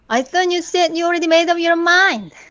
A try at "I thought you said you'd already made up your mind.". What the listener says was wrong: Now, it sounds like you're a little mad, but it's it's still good.